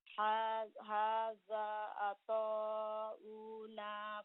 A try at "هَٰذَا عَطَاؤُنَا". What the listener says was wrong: The Hamza is short.